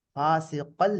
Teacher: சேர்த்து ஓதினால் இத்காம் தாம் பிலா குன்னா, ஃபாசிகல் என்று ஓதணும். இத்காம் தாம் பிலா குன்னா, குன்னா இல்லாம ஓதணும்.